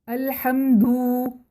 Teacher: مثلاً الحمد کو الحمدو پڑھیں، ہم نے دال کو مد دے دی ہے، مد کا مطلب کھینچنا ہوتا ہے، تو دال کو ہم نے کھینچ کر پڑھ دیا یعنی کہ واو کا اضافہ کر دیا